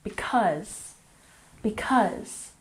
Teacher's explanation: because has emphasis on the second syllable